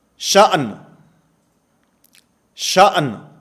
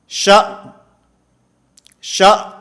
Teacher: حمزہ اور آخر میں نون، یہ دونوں ساکن ہیں۔ بسا اوقات ہم پڑھتے ہیں تو پڑھتے ہوئے شا شا، اب حمزہ متحرک کی آواز تو حمزہ ساکن کی آواز تو آ رہی ہے، نون کی آواز ختم ہو گئی ہے۔ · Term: دو ساکن